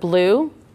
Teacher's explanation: So our vowel sound is the UE here. However, we're not enunciating U. We're not making that vowel say its name. So the tricky part with U, and this is just with this particular vowel, when he's long, he actually sounds like this.